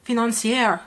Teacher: a lot of thai people will kind of elongate the last syllable of the word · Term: thai accent